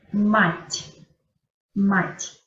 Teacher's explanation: yo pronuncio la T como si yo tuviera la intención de decir la I, como si yo tuviera la intención de decir mать, pero yo no digo la I, yo solamente digo mать. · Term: el signo blando